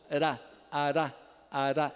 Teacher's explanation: Foi a ponta da língua batendo rapidamente no ponto que a gente chama de alveolar, que é um pouquinho depois da região dos dentes, chamada aquela coisa, os alvéolos, tá? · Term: vibrante simples